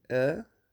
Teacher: o português brasileiro e o português europeu compartilham mais ou menos esse [ɐ], mas o português brasileiro o tem um pouco mais aberto